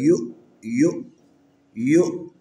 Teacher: حمزہ کو جب ادا کریں گے تو تھوڑا سا جھٹکے کے ساتھ، یعنی یہ ایک ہمارے جو نا ناف کے اوپر تھوڑی سی جو نا اور فشار کے ساتھ اس کو پڑھنا ہے.